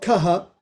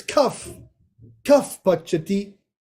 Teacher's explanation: Upadmaniya is when you replace it with the F sound.